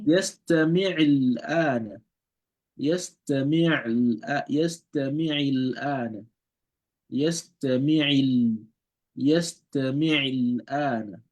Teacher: So the Hamzatul Wasl is not pronounced in between that